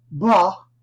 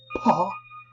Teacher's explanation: with ba there is a little bit of vibration with paw however there is no vibration and that's because of vocal folds so ba is voiced while · ba is voiced while paw is voiceless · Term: voicing